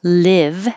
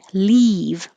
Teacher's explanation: live is the tongue's a little lower